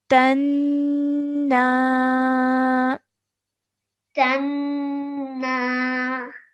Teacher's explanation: we have to hold the noon sound in our nose for two seconds before letting it go to produce the vertical fattah sound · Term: nasal sound